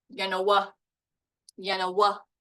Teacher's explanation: it has 3 syllables. And look where the stress is. It's on the last one, right here.